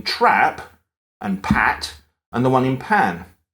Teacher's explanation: So in my speech, there's no difference between the vowel in trap and pat and the one in pan. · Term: TRAP vowel